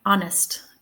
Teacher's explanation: The first syllable is stressed, and the H is in the first syllable, but it's silent. So yeah, if it's silent, it might be in a stressed syllable, but we won't hear it.